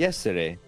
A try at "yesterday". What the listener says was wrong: It's like you're saying more emphasizing it like a D instead of a T, which I get.